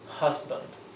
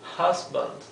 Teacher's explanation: La u inglesa es algo intermedio entre una a y una e.